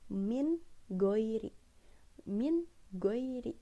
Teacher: nggak ada suara yang dengung, nggak ada suara yang sengau, bener-bener jelas gitu. Ajarun, runnya itu jelas, goirunya pun jelas gitu. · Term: izhar